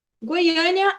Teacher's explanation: a gente tem essa entonação, a sílaba tônica, que é a sílaba mais forte, no A, e ali a gente tem um acento circunflexo.